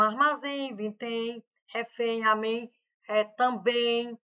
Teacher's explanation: São todos sons nasais aqui, ó. Sai um pouco pelo nariz, tá?